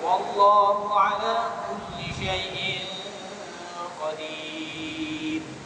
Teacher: Mat alif disebut ya, dan ra itu dibaca dengan tipis ya. Jangan dibaca tebal.